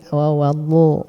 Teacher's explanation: tepi lidah ya, atau hafatul lisan, nempel ke gigi geraham ya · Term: huruf dhad